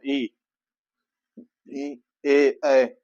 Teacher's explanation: अग्र स्वर जीव का अगला ई इ ए री मतलब अगला भाग कंपन कर रहा है तो अग्र स्वर कहते हैं · जिन स्वरों का उच्चारण क्रम में जीवा का अग्र भाग से होता है उसे अग्र स्वर कहते हैं।